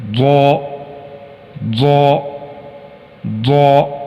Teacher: حرف زا کی نسبت حرف ضا کی آواز موٹی اور بھاری ہے